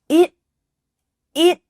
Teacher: the T stopping short on the top of your mouth. It, we didn't say it.